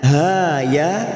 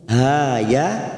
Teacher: ha ya kita panjangkan dua harakat